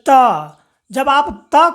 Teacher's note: अब जैसे कि आप यहां समझिए आप बोलिए त को बोलिएगा तो आपका जो जीभ है बच्चों वो देखिए दांत के पीछे में यानी कि जस्ट दांत के पीछे को टच करेगा।